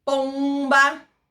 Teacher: Então, é uma nasalização de vogal, mas fonologicamente a gente representa isso com uma nasal nessa posição.